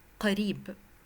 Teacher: Many students read it قريب. If you change the a sound to a short sound and the ri to a long sound, it would be قريب